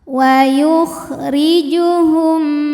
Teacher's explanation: ra ini dibunyikan secara tarqiq sebab ra berbaris di bawah yaitu barisnya kasroh, maka dibacanya tipis, pangkal lidah datar